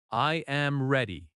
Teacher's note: Your voice goes down at ready. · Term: Falling tone